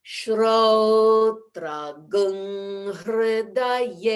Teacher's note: In Vedic chant, whenever anusvara is followed by a ha, as in hridaye, or sometimes a sibilant, that shrotram will change to a shrotragung.